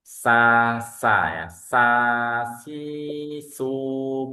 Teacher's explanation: huruf sin dia sama hames ya rakhawah juga tapi dia tipis ya Dia tipis infitah bukan itbaq. Jadi tidak ada ee lidah tidak ada naik naik ke atas